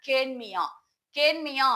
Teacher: கேள் கூட்டல் மியா மியா என்றால் அசைச்சொல். இந்த மியான்னு சொல்லக்கூடிய அசைச்சொல்ல வரக்கூடிய இகரத்தினுடைய மாத்திரை அளவு அரை மாத்திரை. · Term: குற்றியல் இகரம்